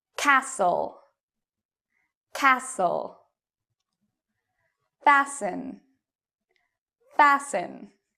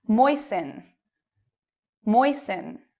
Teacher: you do not pronounce the T in these words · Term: silent T